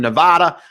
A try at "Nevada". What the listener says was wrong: Mispronounced it, man. Yeah. It's not duh. People from Nevada get very offended when you say Nevada.